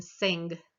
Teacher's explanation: And then the velar, we're back at the velum again when we make that ng sound, as in sing.